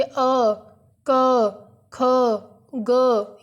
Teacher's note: वर्णों का उच्चारण हमारे किस भाग से होगा? गले से होगा। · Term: कंठ